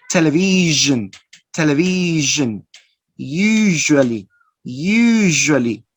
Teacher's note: One is voiceless and the other is voice. Both are fricative, both are palatal or post-alveolar sounds.